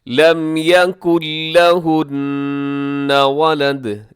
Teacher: نون بالکل سائلنٹ ہو جائے گا، نہیں پڑھا جائے گا، کاف کو لام کے ساتھ ہجے کرتے ہوئے ڈائریکٹ ہم ملائیں گے